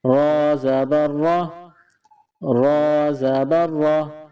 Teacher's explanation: اس کے بعد را ہے، را کے اوپر زبر ہے۔ را کے اوپر جب زبر ہوتا ہے تو اس را کو موٹا پڑھتے ہیں